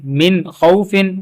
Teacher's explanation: میم زین من، خا زبر خو، من خو، فا دو زیر فن، من خوفن. اب نون ساکن کے بعد پھر خا ہے حروف حلقیہ تو یہاں پہ بھی غنہ نہیں ہو رہا